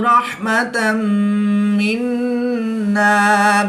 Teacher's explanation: 2 زبر کی تنوین کے بعد میم حروف یرملون میں سے ہے تو یہاں پر ادغام مع الغنہ ہوگا، نون مشدد میں غنہ آنی کر کے پڑھیں گے۔